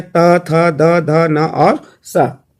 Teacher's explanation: दांतों से उच्चारित होने वाले